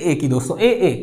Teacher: ए कंठ प्लस तालु, कंठ तालव्य